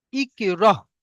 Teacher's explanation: সাকিন যুক্ত হামজাকে একটু ঝাটকা বা ধাক্কা দিয়ে পড়তে হবে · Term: হামজা সাকিন